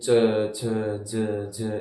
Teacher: च वर्ग आता है स्पर्श संघर्षी, क्योंकि उनका उच्चारण करते समय संघर्ष होता है, मतलब शब्दों में बाधा उत्पन्न होती है, जैसे कि च छ ज ज, एकदम ऐसे लग रहा ना घर्षण होता है, संघर्ष करना पड़ता है उनका उच्चारण करने के लिए, इसलिए स्पर्श संघर्षी।